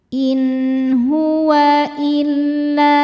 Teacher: Sebab ada nun sukun bertemu dengan huruf halqi. Halqi itu artinya tenggorokan ya. Jadi ketemu huruf tenggorokan yaitu ha. Cara bacanya nun sukun dibaca dengan jelas. In huwa illa, La hukumnya mad tabi'i dhahiri karena ada alif sebelumnya fathah. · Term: izhar halqi